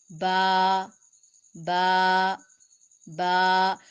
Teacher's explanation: با دونوں ہونٹوں کے گیلے حصے کے ادا کرنے سے، ملانے سے ادا ہوتا ہے۔ دونوں ہونٹ جہاں پہ قدرتی طور پر ویٹ اور تر ہوتے ہیں وہاں سے با ادا ہوتا ہے انتہائی نرمی سے۔ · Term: حروف شفویہ